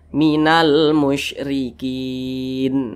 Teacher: huruf nun tidak dibaca panjang kita berhenti pada huruf nun maka huruf nun disukunkan atau dimatikan musyrikin nah dimatikan seperti itu jangan dibaca musyrikina jangan tapi musyrikin